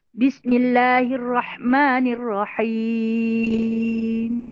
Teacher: Bila sebut min tu kena ada sedikit bunyi dengung.